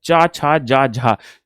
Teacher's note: स्पर्श संघर्षी तो चा वर्ग को कहा जाता है